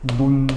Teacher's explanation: 디귿이 니은을 만나면 같은 비음으로 바뀌어서 · 히읗 받침 뒤에 니은이 오면 니은으로 발음이 됩니다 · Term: 비음화 현상